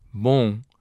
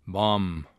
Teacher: This is true for all words in Portuguese that end in M. The final M in Portuguese serves to nasalize the preceding vowel. Therefore, it is bom and never bom.